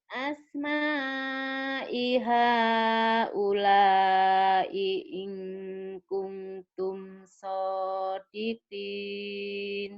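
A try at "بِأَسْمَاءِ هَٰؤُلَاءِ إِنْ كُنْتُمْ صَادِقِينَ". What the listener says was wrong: Iya, di situ ada ifanya ya. I'ing kuntum.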